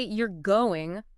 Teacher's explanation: if I say you're going with that rising intonation at the end, Oh, it's a question.